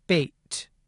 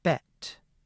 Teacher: in the mid-front part of the space, we have the sound [eɪ] as in bait, and [ɛ] as in bet.